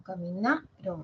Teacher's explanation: Ubico el acento fonético. Caminaron. Ah, ya está en na. Es grave.